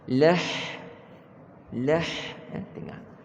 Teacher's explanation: Jangan ha yang dekat dengan dada tu. Tengah halqum kita.